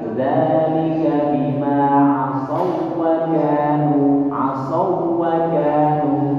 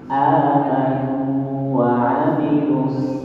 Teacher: Hukum idghamnya mutamatsilain. Waw yang pertama melebur ke dalam waw yang kedua, alasannya hurufnya sama.